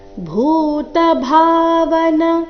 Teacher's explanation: ಭೂ ಮಹಾಪ್ರಾಣ ದೀರ್ಘ, ಭಾ ಮಹಾಪ್ರಾಣ ದೀರ್ಘ.